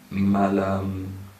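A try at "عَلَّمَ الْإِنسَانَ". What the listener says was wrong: No, a long vowel. Yes. Ma. No. Then the long vowel is only with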